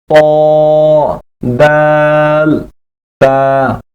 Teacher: জিহ্বার আগা সামনের উপরের দুই দাঁতের গোড়ার সঙ্গে লাগাইয়া